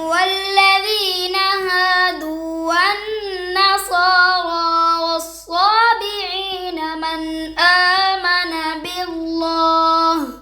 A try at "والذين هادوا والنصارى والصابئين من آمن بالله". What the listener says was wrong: دو غلطی۔ اچھا بچو اب باللہ پہ ہم نے وقف کیا ہے، کیا کیا ہے؟ وقف کیا ہے، تو ہم نے ہا پڑھی ہے لیکن ہا کی زیر اب ادھر کوئی نشانی آگے نہیں ہے نا، کوئی بھی نہیں، ہم رک گئے ہیں نا، رک سکتے ہیں نشانی ہو یا لیکن رکنے کے بعد دیکھنا ہے کہ نشانی کوئی بھی نہیں تو پیچھے پڑھنا ضروری ہے، کوئی کسی قسم کی نشانی نہ ہو پیچھے پڑھنا